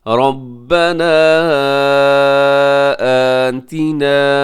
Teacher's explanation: मन यक़ूलु आगे रब्बना आतिना, इसमें रॉ मोटा पड़ेगा और इसके ऊपर जो मद है मद मुनफसिल है, आप 4 सेकंड तक लंबा कीजिएगा